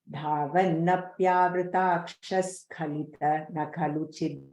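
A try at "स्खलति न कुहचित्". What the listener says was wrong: Same, you said kahachit, kuhachit, skhalati na kuhachit.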